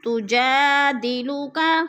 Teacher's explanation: الف مدہ کو بھی ہم نے ایک الف 2 حرکات کے برابر لمبا کر کے پڑھنا ہے